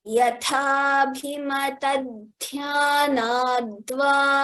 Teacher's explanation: When we chant it completely, the takara becomes dakara